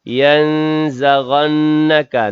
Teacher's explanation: nun mati bertemu dengan zai dalam kalimat tersebut, ikhfa hakiki dengung 2 harakat. Kemudian nun yang bertasydid dalam kalimat tersebut, wajibul gunnah, wajib dengung 2 harakat juga.